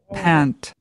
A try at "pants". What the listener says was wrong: Pants. Pants. Pants. Pants. You have to pronounce that S, right? Pants.